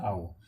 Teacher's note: The vowel glide begins from the positions of a central rounded vowel below half open towards the positions of a centralized back rounded vowel above half close. So the vowel glide begins from the positions of a centralized rounded vowel.